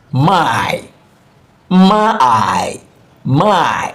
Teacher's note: So we are gliding from A to I. · Two vowel sound. Gliding into one another smoothly. Diphthong. Still counting as one syllable.